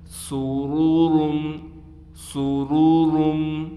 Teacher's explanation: دونوں را کو ہم موٹا بھی کر کر پڑھیں گے، دوسرے را کو ہم میم کے ساتھ ملا دیں گے غنّے کے ساتھ